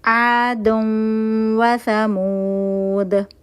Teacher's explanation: थोड़ी सी नून की आवाज आएगी थोड़ी सी वाव की आवाज आएगी टू काउंट का गुना करेंगे · دن تھا دن، تنوین میں نون چھپا ہوا ہوتا ہے، نون کے بعد واو آ رہا ہے تو یہاں پہ ادغام ناقص بالغنہ ہوگا. تھوڑی سی نون کی آواز آئے گی، تھوڑی سی واو کی آواز آئے گی. 2 کاؤنٹ کا غنہ کریں گے.